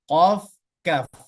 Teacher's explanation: hurufnya itu adalah Q dengan Kaf dia berada di Pangkal lidah pangkal lidah